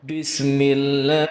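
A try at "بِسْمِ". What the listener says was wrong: Dari sini, Bismillah, ba itu bukan gitu cara bacanya. Bukan Bismillah, tapi Bismillah. Karena ba itu saya tulis di sini sudah memiliki sifat jahar, bukan hames. Kalau hames itu mengalir nafasnya. Jadi Bismillah, kalau cara membedakannya, cara mengetahuinya, itu kita letakkan kertas atau tangan kita di depan mulut.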